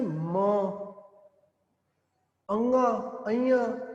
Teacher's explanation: ਮੂੰਹ ਦੇ ਰਸਤੇ ਨਹੀਂ, ਨੱਕ ਦੇ ਰਸਤੇ ਚੋਂ ਹਵਾ ਬਾਹਰ ਆ ਰਹੀ ਹੈ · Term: ਨਾਸਕੀ ਵਿਅੰਜਨ